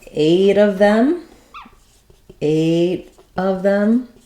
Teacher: that t will turn into a little bit more like a d it'll turn into a flap sound